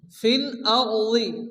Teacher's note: রাকে পুরো অর্থাৎ মোটা উচ্চারণে পড়তে হবে